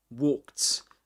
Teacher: The ed is pronounced as t walked and in American English is worked again.